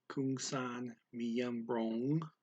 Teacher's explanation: The words miembro and ang are blended by the speaker. · instead of stopping at bro, they go right to ong for the ang